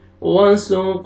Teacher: قاف پہ قلقلہ double sound آئے گا